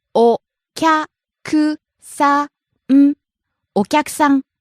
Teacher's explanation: Starts low, rises on kya, stays high.